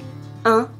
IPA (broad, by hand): œ̃